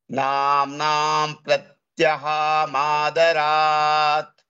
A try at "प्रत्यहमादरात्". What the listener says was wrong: ha is hraswal pratyaha. It is not pratyaha. Namnam pratyahamaadarat.